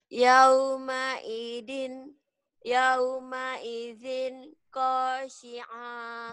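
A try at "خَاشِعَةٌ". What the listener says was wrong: Oh, jawabannya keluar qasiah. Kho. Bukan kok. Kho. Pendek. Khasyiah gitu. Khasyiah.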